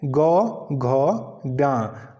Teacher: तीसरा चौथा और पांचवा जो हमारे पास वर्ण है वह कैसा है वह हमारे पास घोष वर्ण है